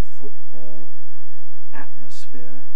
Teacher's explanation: i certainly do use glottal stops in words like football atmosphere